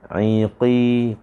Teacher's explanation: Qaf kena tebal. Walaupun dia berbaris bawah, jangan iki nanti huruf kaf.